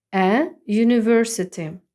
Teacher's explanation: U позначає два звуки приголосний й і голосний у і виходить що перший звук приголосний тому пишемо артикль е а не н a University давайте трохи